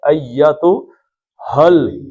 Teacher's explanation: ہاں کو سینے کی طرف سے نکالنا ہے، گلا جو سینے کی طرف ہے